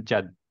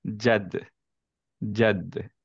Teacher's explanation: আমরা বলছিলাম যে দালের কলকলাটা আমরা ইউজুয়ালি দেই না, অ্যান্ড এটা এই জন্য যে অ্যাকচুয়ালি দাল হচ্ছে ওয়ান অফ দোজ লেটার্স যার প্রপার্টি হচ্ছে এটা সুকুনে কলকলা হতে হয়, মানে হচ্ছে একটা একো হতে হবে